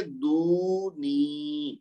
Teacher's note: دونوں کو لمبا کریں گے، دونوں کو 2 حرکت تک کھینچ کر پڑھیں گے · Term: واو مد بھی